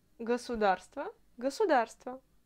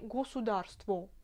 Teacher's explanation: À Moscou, on prononce toujours tous les O inaccentués comme A. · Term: l'accent de Moscou